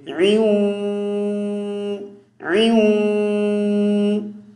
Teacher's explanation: یہاں پہ عین پر تنوین آئی ہوئی ہے, دو زبر کو تنوین کہتے ہیں, تو اس میں نون ہے, درمیان میں کیا ہے, نون ہے. تو عین کو جب واو کے ساتھ ملائیں گے تو ناک میں آواز کو لے جائیں گے